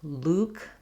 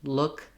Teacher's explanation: hearing that difference between oo and uh like Luke the man's name and look is challenging